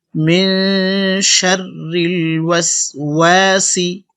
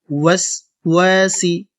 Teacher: ওয়াও ঠোঁট গোল করবেন, না হলে কিন্তু সঠিক উচ্চারণ হবে না।